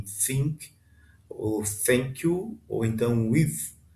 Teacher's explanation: O nome você pode chamar de teta, mas a pronúncia correta seria o TH do inglês, como em think, ou thank you, ou então with, né? Esse som aveludado com a língua entre os dentes.